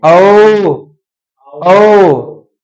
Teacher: जिनको बोलने में मुंह गोल हो जाए वो वृत्त मुखी।